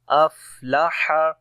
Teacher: افلح، فا کے اندر صفت ہمس ہے، سانس جاری ہوگا اور ہا کو گلے کے درمیان والے حصے سے پڑھیں گے